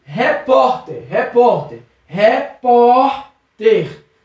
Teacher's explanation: Percebeu que o por é mais forte? Termina com R. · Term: sílaba tônica